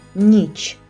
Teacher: слово ніч перший звук у слові нь м'який